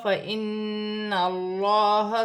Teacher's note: نون مشدد میں غنہ ہوگا۔ اللہ کی لام سے پہلے زبر آ رہی ہے، اللہ کی لام موٹی پڑھی جائے گی